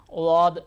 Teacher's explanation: किनारे को ले दाएं किनारे को ले रहे हैं तो दाए जबान का दाया किनारा राइट वाला ऊपर के दाढ को लगाए दद निकलता है या फिर बाएं किनारे